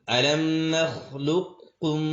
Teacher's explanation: قاف اور کاف کا قریب المخرج ہے، اور متحد الصفات بھی ہیں، دونوں کی صفات تقریباً ایک بھی ہیں، ایک ہی ہیں، زیادہ صفات ملتی ہیں، چند صفات میں جو ہے نا وہ تبدیلی ہے. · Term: ادغام متقاربین